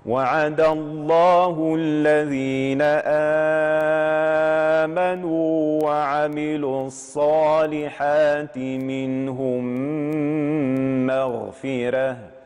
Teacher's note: القاعدة التجويدية هنا تقول اقرأ الميم الثانية المحركة مشددة مع استعمال الغنة هكذا. وعد الله الذين آمنوا وعملوا الصالحات منهم مغفرة، والميم المشددة دائما فيها الغنة الكاملة.